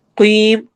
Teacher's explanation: قاف کو موٹا پڑھنا ہے اور مد العارض سکون کرنی ہے